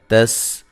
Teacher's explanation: سین کو باریک اور باریک سیٹی سے ادا کریں گے سین کو